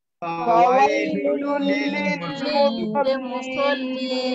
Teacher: একটু ফাঁকা রেখে, তারপরে ইয়ার আওয়াজ, ইয়াটা এখানে মাদের হরফ না বরং লিনের হরফ, খুব নরম করে।